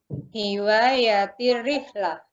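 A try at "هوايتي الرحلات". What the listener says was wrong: Iya, hiwayati rihlat. Rihlat. Dipanjangin. Rihlat. Karena rihlat dijamakan jalan-jalan maksudnya. Kalau rihlat cuma satu perjalanan. Kalau rihlat suka jalan-jalan. Hiwayati ar-rihlat. Ya, hiwayati ar-rihlat. Hiwayati ar-rihlat langsung aja begitu.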